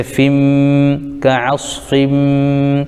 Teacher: فا کے نیچے دو زیر، تو یہاں پر بھی قاعدہ ہے تنوین کے بعد حروف یرملون میں سے میم آ رہا ہے اس لیے ادغام یرملون مع غنہ ہوگا، تو فا کو میم میں ملائیں گے